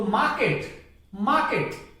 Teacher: रे का तो उच्चारण ही नहीं होगा क्योंकि रे के पीछे व्यंजन आया हुआ है कै, तो मार्केट, मार्केट।